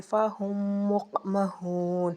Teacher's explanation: ادغام شفوی، میم ساکن کو دوسری میم میں مدغم کرنا